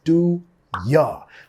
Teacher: Ahí estamos reduciendo el you a un ya.